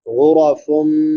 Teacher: فا پہ نون تنوین ہے، بعد میں حروف یرملون میں سے میم ہے تو ادغام مع الغنہ ہوگا